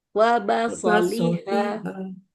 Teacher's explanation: So-nya pendek, Bu. Kepanjangan so.